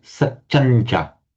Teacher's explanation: So satyam plus cha can either be written in that way, just satyam cha, or it's permissible, and you will very often see it written like that. So the final nasal alters its position both in pronunciation and in writing for the following cha